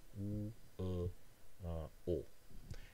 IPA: u: ʊ o: